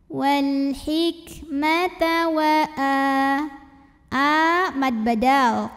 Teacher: bacanya panjang 2 harokat alkitabal Wal ada Alif Lam Qomariah karena alif lam menghadapi huruf Qomariah yaitu H maka lamnya dibaca izhar jelas